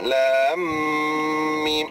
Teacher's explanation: lam nak pergi pada mim mesti kena dengung 2 harakat